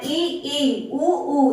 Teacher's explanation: ई बोलने में मुख बहुत कम खुलता है, ई, उ, इनको खोलने में मुख जो होता है ना बहुत ज्यादा ही कम खुलता है।